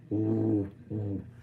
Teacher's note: we're rounding our lips, but we also have our tongue back up near our velum, where where we would actually say like ooh, but instead we're going ooh, and the air is coming through, it's vibrating.